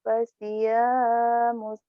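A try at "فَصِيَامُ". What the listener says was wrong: Kalau pasyamus ada tasdid, hati-hati. jangan mus ya. Kalau mus berarti ada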